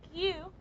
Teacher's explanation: we're using the front part of the tongue to touch the hard palate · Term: palatal sound